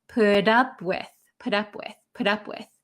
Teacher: this T is going to become a D sound in American English